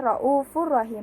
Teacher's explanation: tanwin dengan memasukkannya pada huruf lam dan ro tanpa mendengung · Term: idgham bila gunnah